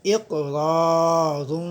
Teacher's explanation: تو قاف جب ساکن ہو تو وہاں قلقلہ ہوتا ہے، یعنی دوبارہ سے آواز آتی ہے۔